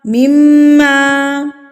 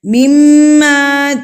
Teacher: ایک حرکت کے برابر آپ نے اس کو ناک میں میم کی آواز کو روک کے رکھنا ہے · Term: غنہ